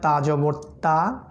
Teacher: জিহ্বার অগ্রভাগ সামনের দাঁতের পিছনের অংশে ধাক্কা লাগবে